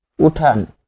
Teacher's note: এখানে ন এর সাথে অ আছে কিন্তু উচ্চারণে কিন্তু অ আসতেছে না।